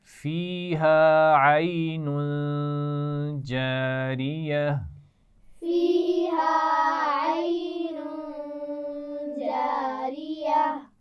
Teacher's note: عین اس تنوین پر غنہ کریں گے کیونکہ اس کے بعد جیم ہے، حروف حلقی بھی نہیں ہے، لام و را بھی نہیں ہے، جیم ہے، تو یہاں پر غنہ ہوگا.